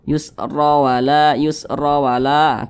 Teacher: Jadi kalau huruf ra memiliki tanda baca fathah, maka huruf ra dibaca tebal seperti itu. Sehingga pangkal lidah kita itu naik ke atas. Yusra wala, keangkat ke atas.